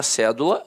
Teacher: a palavra cédula, notoriamente, é uma proparoxítona. A sílaba tônica está na antepenúltima sílaba.